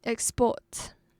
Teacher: The verb, we put stress on the second syllable.